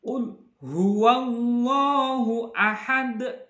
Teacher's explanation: Jadi matinya itu memantul dan memantulnya sangat kuat. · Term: qalqalah kubro